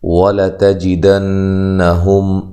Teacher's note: واو کو ادا کرتے ہوئے ہونٹوں کو گول کرنا ہے، لام کو لمبا نہیں کرنا اور لام کو موٹا بھی نہیں کرنا، ٹھیک ہے۔ تا کو باریک پڑھنا ہے اور لمبا نہیں کرنا۔ زبر زیر پیش کو لمبا نہیں کیا جاتا، جن حروف کے اوپر زبر زیر پیش ہو ان کو لمبا نہیں کیا جاتا۔